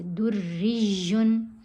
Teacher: پہلے دال کو اپنے را سے ملانا ہے مضبوطی کے ساتھ. تشدید والے حرف جو ہیں وہ مضبوطی سے ملائے جاتے ہیں. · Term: ڈبل تشدید